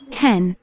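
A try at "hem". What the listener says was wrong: 자, 햄이면? 이래야지 햄이겠지. M하고 N을 지금 계속해서 구분 안 하고 있어. M, N. M은 미음, N은 니은.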